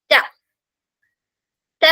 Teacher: മുകളിലെ മുൻപല്ലിന്റെ ആ ഒരു റൂട്ട് ലൈനിൽ അല്ലെങ്കിൽ ഗം ലൈനിൽ അല്ലെങ്കിൽ റൂട്ടിൽ വേരിൽ ടച്ച് ചെയ്തിട്ടാണ് പറയേണ്ടത്